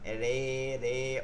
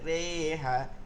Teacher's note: মূল শব্দের র এর উপর জবর যেটা আছে মেজে র, এই জবর থাকায় জেরকে জবরের দিকে ঝুঁকিয়ে পড়তে হয় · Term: এমালা